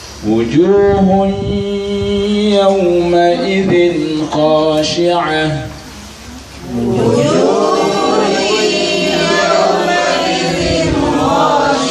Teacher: jadi dilebur dimasukkan disertai dengung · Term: idqam